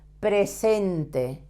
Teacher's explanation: You have to pronounce the last E. In Spanish, we always pronounce all vowels.